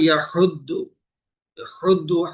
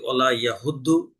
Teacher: হুদ্দু হা গলা চিপে আদায় করতে হবে